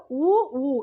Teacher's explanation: சொல்லி பார்த்தா உ ஊ இதுதான் இதழ்களை குவிப்பதால் பிறக்கும் எழுத்துக்கள்